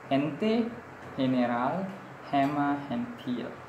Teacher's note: it is pronounced as glottal or through the H before E and I. Before E and I, nagiging parang H na yung letter G.